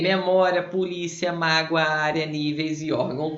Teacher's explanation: Todas essas palavras são paroxítonas, né? A sílaba tônica é a penúltima. Terminada em ditongo, que são essas duas vogais que não se separaram.